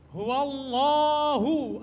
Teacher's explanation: Lafaz Allah yang dibaca tafkhim.